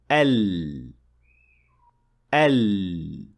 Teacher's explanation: the breath or air will escape from around the tongue so from both sides an air passing through like that produces the sound of Lem